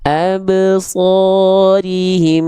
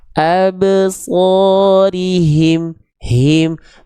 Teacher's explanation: Nah, H besar itu dua sifat ininya jangan khofa, jangan samar. Harus dua-duanya kedengaran aliran nafas dan suaranya · Absorim gisya itu enggak jelas. Harusnya H-nya, suaranya, nafasnya terdengar dengan jelas mengalir.